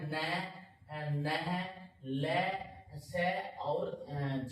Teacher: इन व्यंजनों को जब अपन बोलते हैं तो मसूड़ों के साथ जीभ का स्पर्श होता है। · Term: वत्सर व्यंजन